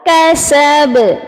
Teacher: اس کی با کی زبر کو ڈراپ کریں گے اور با کو ساکن کریں گے، پھر قلقلہ کبریٰ ہوگا